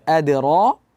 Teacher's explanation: dal sukun itu bersifat memantul, qalqalah. Seperti tadi sudah kita jelaskan, adra di ayat ketiga, wa ma adra, tidak ada hamzah di pantulan qalqalah.